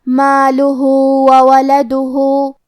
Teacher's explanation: آخری میں ہاں پہ الٹا پیش ہے. یہاں حکم ہے مد صلہ صغرا. ہم اپنی آواز دو مد کے برابر لمبی کریں گے